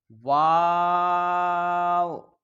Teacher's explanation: میم، دونوں ہونٹوں کے خشک حصہ سے ادا ہوتا ہے۔ واو، دونوں ہونٹوں کی گولائی سے ادا ہوتا ہے